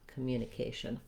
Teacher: the first letter o in communication doesn't say an o sound or an ah sound it's a reduced vowel that sounds like uh it's a schwa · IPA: /ə/